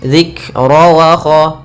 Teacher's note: Di sini pada lafal kaf ada kaf yang sukun. Ketika melafalkan kaf sukun itu usahakan ada hamznya, ada sifat mengalirnya nafas.